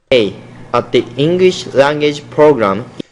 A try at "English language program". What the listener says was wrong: Now you want to see here language program, so you're having some problems with your L consonant sound.